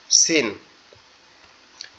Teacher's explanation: সিন আমাদের জিহ্বার আগা নিচের দাঁতের উপরে লাগবে, লেগে আওয়াজ হবে সিন।